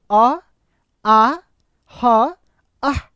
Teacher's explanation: अ, आ, ह और विसर्ग इसका उच्चारण स्थान कहां हो गया? कंठ हो गया।